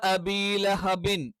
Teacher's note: രണ്ട് ചുണ്ടിൽ നിന്നാണ്. രണ്ട് ചുണ്ട് ശക്തമായ രീതിയിൽ അടച്ചു വെച്ചുകൊണ്ടാണ് ബ ഉച്ചരിക്കുന്നത്.